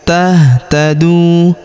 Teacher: Huruf du kita panjangkan dua harakat karena terdapat wau sukun di depannya. Alifnya tidak dibaca karena kita berhenti di sini ya.